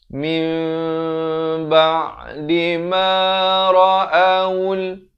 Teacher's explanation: ditukarkan bunyi nun kepada bunyi mim dengan kadar panjang 2 harakat. Daripada min menjadi mim. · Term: iqlab